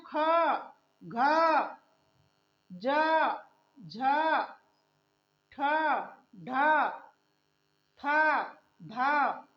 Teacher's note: जिसमें ज्यादा ताकत लगाते हैं, जिसमें श्वास जोर से आती है, उसे कहते हैं महाप्राण।